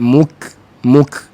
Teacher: makna makhraj pangkal lidah tapi ke depan sikit